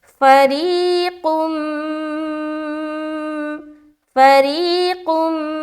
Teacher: نبذ نبذ، آگے فریقم، فا زبر فا، را یا زیر ری جب پڑھیں گے تو را کو باریک رکھیں گے اور یہاں دیکھیں یا ساکین ہے اور اس سے پہلے زیر ہے تو یا مدہ کریں گے، یعنی کہ ایک الف کے برابر کھینچیں گے